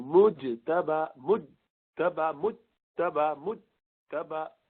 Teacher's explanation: مجتبہ کہیں گے تو مج ایسا کرنا پڑے گا تاکہ زبان اپنی جگہ پر آئے اور تا کو دوبارہ استعمال کرے. ورنہ زبان کی بیچ کا جو حصہ ہے وہ اوپر جیم کے لیے آپ نے لگا دیا اور وہ شدید حرف ہے جیم